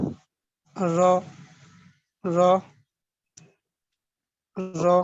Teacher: তাকরার, জি তাকরারে জি, তাকরার হরফ র, র যখন আদায় করবো তখন দেখা যায় যে জিহ্বা আমাদের কেঁপে কেঁপে ওঠে আর কি, অনেক র উচ্চারণ হওয়ার সম্ভাবনা থাকে।